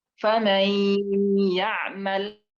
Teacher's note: Nah, nun mati harusnya faman ya'mal, karena idgham bi gunnah, maka idgham nunnya dimasukin ke ya, lalu kemudian ada gunnah di situ